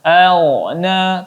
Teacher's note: ketika memasuki huruf ghain maka ditebalkan. Di sini huruf ghain huruf yang tebal, apalagi sebelumnya ialah huruf yang berharakat fathah maka dibaca tebal.